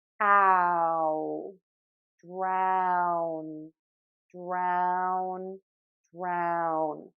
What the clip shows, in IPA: draʊn